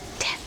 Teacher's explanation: The third consonant is the T, as in ten. It is described as a voiceless alveolar plosive consonant.